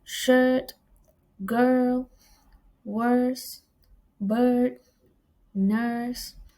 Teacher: Uh the next vowel sound is uh a mid-center vowel sound pronounced in the central part of the vocal tract with the tongue partly open and the lips in a unrounded position. Examples are shirt, girl, worse, bird, nurse.